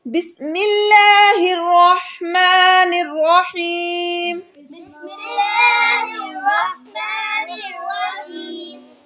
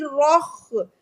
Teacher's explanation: آپ میں سے بہت سے بچے جیسے پڑھتے ہیں رخ، یہ خا نہیں ہے، یہ ہا ہے، حروف حلقی، اس کو حلق سے نکالیں گے۔